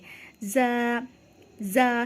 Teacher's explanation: हमारी ज़बान दांतों से लगकर हल्की से खुलेगी, ज़ा अदा होगा वहाँ से। ज़ा, ज़ा सख्ती से हम पढ़ेंगे, जो प्रेशर है हमारा ज़ा इस तरीके से निकलना चाहिए, ज़ा, ठीक है।